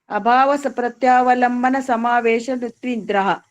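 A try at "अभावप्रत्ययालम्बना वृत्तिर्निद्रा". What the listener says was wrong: समावेश कहाँ से हो गया?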